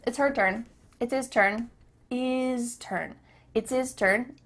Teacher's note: the H at the beginning of his and her is cut off